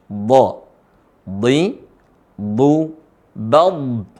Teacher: tempat keluarnya adalah Sisi lisan ketemu gigi geraham atas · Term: huruf d